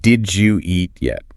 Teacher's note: The D at the end of did and the Y at the start of you collide. Palatalization occurs.